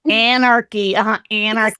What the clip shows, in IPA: ænərki